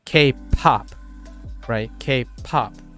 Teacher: there's High aspiration a lot of air is coming out of the p